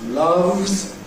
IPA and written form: lʌvz (loves)